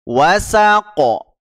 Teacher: huruf qofnya diqalqalah ya karena dia ee punya sifat Qalqalah jadi dipantulkan